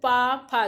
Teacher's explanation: जब आप बोलते हो पा फा तो आपकी जो लिप्स होती है, जो ओट्स होती हैं वो आपस में क्या होती, सटती हैं। तो ठीक है, तो ये आपका पा वर्ग, ये ओठ से बोल जाते हैं